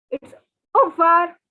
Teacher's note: the r part, they say it so quickly that it's actually not audible.